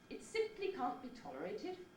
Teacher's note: successive accents can step down in pitch and give you a stepping head